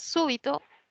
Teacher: súbito es una palabra esdrújula quiere decir que la mayor fuerza de voz está en la antepenúltima